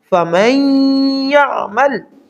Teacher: زیادہ طاقتور ہوتا ہے، زیادہ پاورفل ہوتا ہے، اس لیے یہاں نون کو سکپ کر کے میم کو یا کے ساتھ سختی سے ملا کر پڑھیں گے ، فَمَن يَعْمَلْ، یا کے اوپر زبر اور عین آگے ساکن